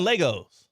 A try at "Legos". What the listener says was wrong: Yeah, there's no Y. You're saying Legos. Legos. It's Legos.